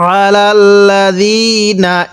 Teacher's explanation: আইনটা একটু চাপ দিয়ে পড়ব, অনেকে আমরা এই আইনগুলোকে হামজা পড়ে থাকি